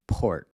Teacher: If you put your hand up against your mouth and say port, you'll feel that puff of air when you pronounce the P